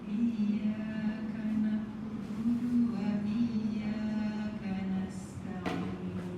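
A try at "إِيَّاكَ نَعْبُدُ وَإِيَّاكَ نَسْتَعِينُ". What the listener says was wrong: Ya, masih kurang mengalir ya. Na'bu, jadi jangan putus suaranya. Na'bu. Na'bu. Ke bu itu suaranya bukan na'bu tapi na'bu. Jangan tajamkan, alirkan.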